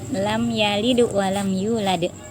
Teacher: Sukun wakafnya adalah mantul karena huruf Qalqalah